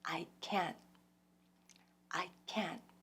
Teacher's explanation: that's the t a sudden stopping of the vibration